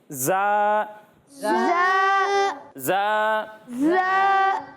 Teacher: جب ہم زا کی ادائیگی کریں گے پیارے بچوں تو اس میں سیٹی کی آواز آئے گی